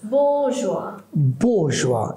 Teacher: there are two long sounds, bo and ah. I mean o and ah, right?